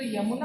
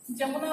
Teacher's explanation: हम हिंदी में य उच्चारण करते हैं, इसको आप उड़िया में ज उच्चारण करते हैं।